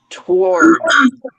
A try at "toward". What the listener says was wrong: You actually pronounce the W.